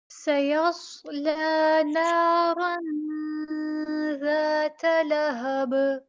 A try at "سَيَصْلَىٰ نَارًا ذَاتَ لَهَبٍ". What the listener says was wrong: نارن سیدھا پڑھیں گے، را اردو والی نہیں. را زا جو اردو کے قاعدے میں وہ نہیں پڑھنی آپ نے یہاں پہ.